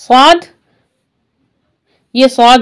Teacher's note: सौद मोटा पढ़ना है, इस वजह से जबान का पूरी जबान ऐसे ऊपर की तरफ जा रही है